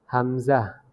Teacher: কণ্ঠনালী শুরু হইতে উচ্চারিত হয়